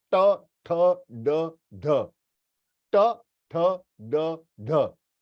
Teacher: The tip of the tongue, hard palate आपके ऊपरी भाग को टच कर रही है, ज्यादा टच कर रही है। ट ठ ड ढ, ट ठ ड ढ, यस, यानी it is touching the hard palate, उसे कहते हैं मूर्धन्य।